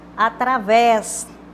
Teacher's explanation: Através, também, oxítona. Sílaba tônica, aquela mais forte, que a gente pronuncia com mais intensidade, a última.